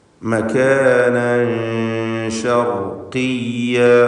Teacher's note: മകാനൻ തൻവീനിന് ശേഷം ഷീൻ വന്ന കാരണത്താൽ ഇഖ്ഫാ ഹഖീഖി നൽകി മറച്ചു മണിക്കുക, അവ്യക്തമാക്കി മണിച്ചുച്ചരിക്കുക.